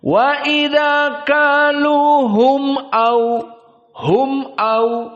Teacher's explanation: maka dibaca dalam keadaan idhar, tidak ada panjang sama sekali